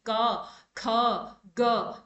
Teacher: जब हम क ख ग बोलते हैं ना, तो प्रेशर हमारे गले पे पड़ता है, ठीक है, जैसे हम बोल के अगर देखेंगे तो लगता है कि प्रेशर गले गले पे आ रहा है, जैसे कि क ख ग, ठीक है ना, गले से हमारी हमारी ज्यादा ध्वनि आती है, यानी कि प्रेशर गले पे पड़ता है। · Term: कंठ, क वर्ग